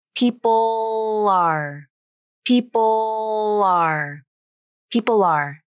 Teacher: a dark, low part made with the tongue pulled back and low in the mouth, tongue tip down, and a Light L part, made with the tongue tip up at the alveolar ridge. · finish the Dark L sound with a Light L, meaning the tongue tip will come up to the alveolar ridge at the end · I use the second part of the Dark L pronunciation, the light L, to link people and are together.